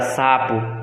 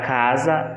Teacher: Na palavra sapo, a letra S representa pelo fonema S. Entretanto, na palavra casa, essa mesma letra representa o fonema Z, que no caso o som de S vem, se for colocar na palavra casa, se a gente for pronunciar, vai ter o som da letra Z.